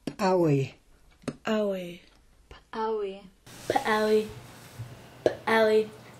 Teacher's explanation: It's like a P, but the sound is ejected out of the mouth with a strong pop. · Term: ejective P